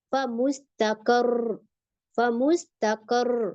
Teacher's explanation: ठीक है, और इसी तरीके से एक होता है फमुस्तक़र्रिन, फमुस्तक़र्रिन, एक और मिसाल, तो उसमें हम कैसे रुकते हैं, फमुस्तक़र, फमुस्तक़र, क्योंकि रॉ को अप करें, रॉ की आवाज थोड़ा ऊंची और उसके तशदीद जो है उसको 2 बार रॉ को हम पढ़ते हैं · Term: नब्र